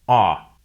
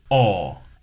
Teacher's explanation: the American O sound is an unrounded vowel, ah, while the British O sound is rounded, aw.